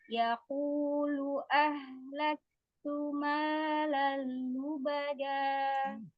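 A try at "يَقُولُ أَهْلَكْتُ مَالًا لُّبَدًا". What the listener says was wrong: Tipiskan lagi kaf sukunnya. Ahlak. Ulang.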